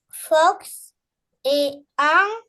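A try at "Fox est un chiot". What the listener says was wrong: Éteint, fait la liaison.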